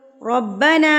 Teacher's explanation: را کے اوپر جب زبر آ جاتی ہے تو را کو پر یعنی کہ موٹا پڑھا جاتا ہے. را کے اوپر جب زبر آ جائے گی تو یاد رکھیے کہ را ہمیشہ پر یعنی کہ موٹا پڑھا جائے گا.